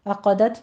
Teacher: والذین عقدت میں عین کو وسط حلق سے ادا کرنا ہے، عقدت میں عین کو وسط حلق سے ادا کرنا ہے اور قوف کو پر پڑھنا ہے اور تا پر حمز پیدا ہوگی